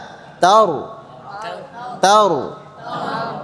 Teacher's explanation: Sifat takrirnya jangan berlebihan, ya, tidak boleh berlebihan.